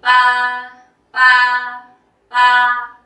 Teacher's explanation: feeling like a zombie pa pa pa like that monotone flat tone mid tone no feeling